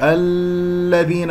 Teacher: الذين اللام اسمية مدغمة مرققة لا تمسك. الذين أطلت زمنها وأصبحت رخوة